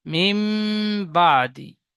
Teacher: নুন সাকিনের পরে বা এসেছে তাই নুন সাকিনের আওয়াজকে মিমের দ্বারা পরিবর্তন করে পড়তে হবে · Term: ইকলাব